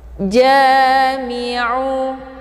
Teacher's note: ja dibaca panjang 2 harokat. Ada alif sebelumnya harokat fathah dinamakan dengan mad tabi'i zahiri.